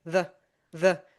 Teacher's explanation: or the the and instead of the instead of pronouncing the e vowel fully, it becomes the schwa sound